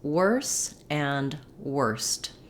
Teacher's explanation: even though we spell worse and worst with o r we do say the eer sound in these words